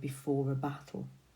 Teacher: We've got that plosive alliteration there on that B, implying that there's some force that's waiting behind it.